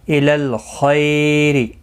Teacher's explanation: خا مستعلیہ ہے، پر پڑھا جائے گا. لام ساکن کو ہلانا نے، خی یالین ہے، تھوڑا نرمی کے ساتھ کھینچ کر ادا کریں گے.